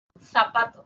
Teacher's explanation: interdentales que la lengua está entre los dientes